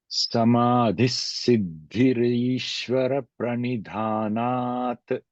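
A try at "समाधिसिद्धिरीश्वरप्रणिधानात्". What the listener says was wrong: Okay, told very well, but after samadhi, there is no stress, since it is just siddhi. Samadhi siddhi.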